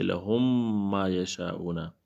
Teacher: تو دونوں میم کو ایک کر کے ادغام مع الغنہ سے پڑھیں گے